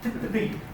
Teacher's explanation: You just got to make sure your tongue curls up for the ri.